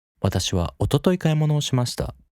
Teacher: In that case, the key information you aim to convey most prominently in this sentence is おととい, right? So the focus is おととい and the pitch curve resets before おととい